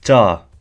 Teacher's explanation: notice how the sound at the end sort of increases in tone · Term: increase in tone